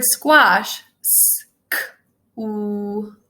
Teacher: that beginning actually has three sounds, the S, the k, and the w sound, all blended together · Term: consonant clusters